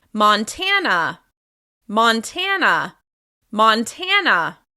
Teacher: Montana is stressed on the second syllable